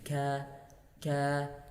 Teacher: Adapun untuk huruf kaf, makhrajnya sama di aqsal lisan, cuman cara bacanya yang tadi ketika kita membaca huruf qaf, lidahnya agak dinaikkan ke atas ke langit-langit. Ketika membaca huruf kaf, maka lidahnya agak diturunkan, agak dikedepankan.